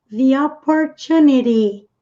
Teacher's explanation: T entre sons de vogais tende-se a pronunciar com esse sonzinho que parece de R. Isso acontece com o T e com o D, como nós já vamos ver numa palavra a seguir aqui.